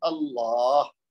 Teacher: تو اللہ خالی نہیں کہنا، لام پہ یعنی جا کے رک نہیں جانا بلکہ ہا تک لے کے جانی آواز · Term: ہا کی آواز